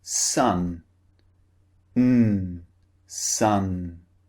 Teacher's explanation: using our tongue inside the mouth the lips are open but the tongue is blocking all the air from coming out of the mouth so the air comes through the nose instead